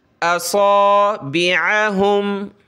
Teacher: सौद को मोटा करें, आइन को गले से निकालें